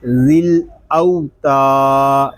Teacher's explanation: تا کو ایک الف تک کھینچ کر پڑھیں گے کیونکہ یہاں پہ الف مدہ ہو رہا ہے